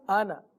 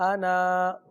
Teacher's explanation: اس کے الف کو نہیں پڑھیں گے وصل کی صورت میں، ہاں وقف کی صورت میں پڑھیں گے، اگر وقف کریں گے تو پڑھیں وصل انا، وقف انا۔